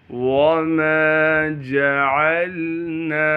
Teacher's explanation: وما جعلنا، واو کو بغیر کھینچے پڑھیں گے، میم کو باریک کر کے دونوں ہونٹوں کو آپس میں ملا کے ادا کرنا ہے۔ میم کے بعد الف مدہ ہونے کی وجہ سے میم کو ایک الف کے مقدار کھینچیں گے۔